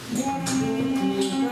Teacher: А «Бом» – это низкий резонатор, самый нижний, самый интересный.